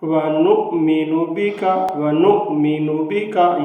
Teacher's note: حمزہ ہے، اس کو جھٹکے کی آواز سے پڑھنا ہے